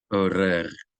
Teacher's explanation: a sound of friction, light friction between the back of your tongue and the back of the roof of your mouth near the uvula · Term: resh